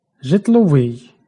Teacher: л сонорний, обидва зубні. Жодного уподібнення не відбувається.